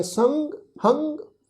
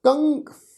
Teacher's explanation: ਟਿੱਪੀ ਦੀ ਜਿਹੜੀ ਮਾਤਰਾ ਹੈ ਇਸ ਮਾਤਰਾ ਦਾ ਉਚਾਰਨ ਹੁੰਦਾ ਨੱਕ ਵਿੱਚੋਂ, ਨਾਸਕੀ ਉਚਾਰਨ ਹੁੰਦਾ ਹੈ। ਸੱਸੇ ਟਿੱਪੀ ਸੰਗ, ਸੰਗ, ਹਾਹੇ ਟਿੱਪੀ ਹੰਗ। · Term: ਟਿੱਪੀ ਦੀ ਮਾਤਰਾ